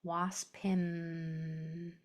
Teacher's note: And my mouth is closed at the end. My lips are together.